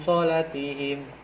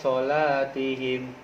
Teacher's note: Jadi ketika nun mati bertemu dengan huruf so, yaitu berubah berdengung. Solatihim. Panjangnya pun 2 harakat. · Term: ikhfa